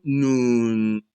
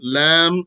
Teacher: The noon is from the edge of the tongue, slightly below the lam.